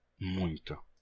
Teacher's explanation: Esse é um caso de nasalização progressiva, em que um fonema nasal transfere a sua nasalidade para fonemas que vêm depois dele